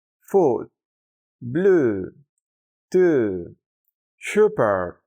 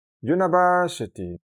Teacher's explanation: simplemente debemos hacer como la U de tu en español, pero un poco más prolongada, aunque no tiene siempre la misma duración exacta debido a que, y como hemos visto en casos anteriores, depende del contexto fonético y del ritmo del habla.